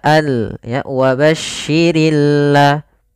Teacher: alif lam yang kita tulis tapi dia tidak terbaca dia sehingga langsung kepada huruf lam yang bertasydid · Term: alif lam syamsiah